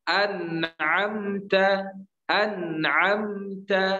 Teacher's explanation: nun di sini jelas tidak ditahan atau bahkan tidak dikol-kolahkan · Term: izhar